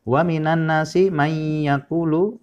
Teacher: ada hukum idgham bi gunnah, yaitu nun mati bertemu dengan huruf ya. Jadi dibaca mendengung.